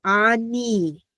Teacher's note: We have the aleph, we have that really quick ah. We have the noon sound, the N, followed by the hirik, the little bit longer E.